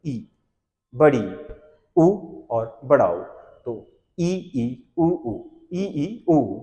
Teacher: संवृत का मतलब है मुख द्वार लगभग बंद रहता है, मतलब बहुत ही हल्का सा खुलता है